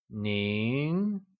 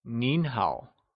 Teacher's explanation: Nin, or the formal, respectful way of saying you, is pronounced with a mid-rising tone, or the second tone.